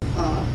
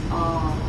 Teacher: the only problem is with the first sound, which is a. And its long counterpart is ah. So it has a qualitative difference.